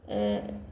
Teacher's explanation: ऊ का उच्चारण स्थान भी ओष्ठ होता है